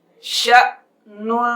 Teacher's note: اب ہم چلتے ہیں اگلے حرف کی طرف، شین حمزہ زبر ش، نون دو پیش نون، شأنن، شین کے ساتھ حمزہ ساکن ہے اس لیے یہاں پر جھٹکے سے پڑھا جائے گا، شأنن، وقف شأن، ہلکی سی نون کی آواز آئے گی، غنہ نہیں کیا جائے گا، شأن۔